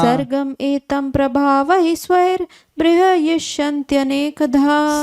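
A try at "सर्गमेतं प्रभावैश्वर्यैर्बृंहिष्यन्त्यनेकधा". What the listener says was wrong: बृहस्यन्ति, बृंहिष्यन्ति, बृंहिष्यन्ति होना, बृंह होना ना, तो ना गलत हुआ, फिर से एक बार बोले।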